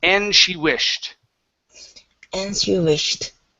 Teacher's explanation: There's no need to finish the D. Move right into the sh.